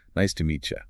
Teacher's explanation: The T and the Y collide to form a she. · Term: palatalization